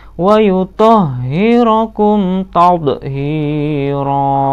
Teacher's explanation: Ro harokat tanwin berada di tempat pemberhentian, harus dibaca panjang. Namanya mad iwad.